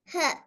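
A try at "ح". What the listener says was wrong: இவரை கொஞ்சம் தடிப்பமா சொல்றது போதாது மத்ததெல்லாம் சரி ஹா எப்படி ஹா நல்லா சொல்லணும் ஹா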